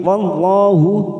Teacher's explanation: Lam jalalah kita baca tafkim. Wallahu. Wa fathah bertemu alif dua harakat. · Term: tafkhim